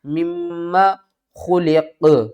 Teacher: یہ جو میم مشدد ہے نا اس کے اوپر غنہ کریں گے